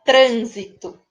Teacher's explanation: ele vai ser escrito com s mas vai ter o som de z como ocorre na palavra trânsito